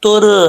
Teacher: पहले वाले हर्फ पर ता पर यानी पेश है ये देखिए तो रा क्या पढ़ा जाएगा पुर यानी मोटा पढ़ा जाएगा